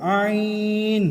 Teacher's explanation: یہ حروف حلقی میں سے ہے اور حلق کے اندر سے ادا ہوگا